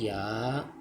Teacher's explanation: जबान का बीच जब तालू के बीच से लगे तो या अदा होता है